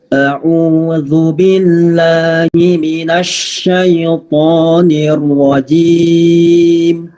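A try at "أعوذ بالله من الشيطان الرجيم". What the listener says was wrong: Alhamdulillah bagus, tidak miring. Terus zunya sudah bagus, tidak terlalu tebal. Dan haknya juga ditekan.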